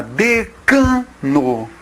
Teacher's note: A palavra decano, ela é uma paroxítona.